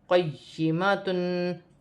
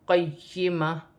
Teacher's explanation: وف کی صورت میں دو پیش کی تنوین گر جائے گی اور تا ہا میں بدل جائے گی